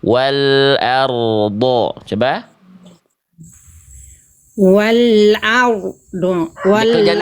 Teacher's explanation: Jadi pertengahan tuh suaranya tidak betul-betul terputus. Dia sedikit mengalir. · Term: ro sukun